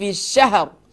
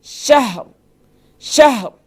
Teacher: یعنی کہ ہا محسوس ہونا چاہیے کہ آپ اس کے اوپر سکون پڑھ رہے ہیں. اگر ہا کے اوپر سکون نہیں پڑھیں گے تو یہ جو ہے یقیناً آپ بہت بڑی غلطی کر رہے ہوں گے.